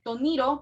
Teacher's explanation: Y con el caso de toniro, palmera, y tonirote, no tenemos ninguna semivocal que esté en uno de estos puntos de articulación como lo está esta guay y esta ya, ¿verdad? Entonces se mantiene como T, se mantiene como una plosiva sorda.